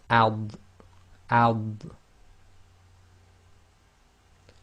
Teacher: the dad is normally pronounced with the left side of the tongue touching the upper left teeth. So even when you do it with sukun, you should feel the left side of your tongue touching the upper left teeth.